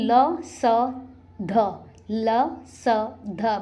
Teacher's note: ये आपके दांतों को टच करती है जीवा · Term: दंतव्य व्यंजन